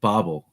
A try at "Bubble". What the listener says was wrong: Yeah, the umlaut over the O, so you pronounce it like it was a U.